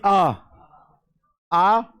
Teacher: जब आप आ बोलोगे तो आपको खुद में लगेगा कंठ से आवाज आ रही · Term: पश्च स्वर